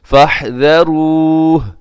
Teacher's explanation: وقف کرتے ہوئے آخر میں ہا کو ساکن کر دیں گے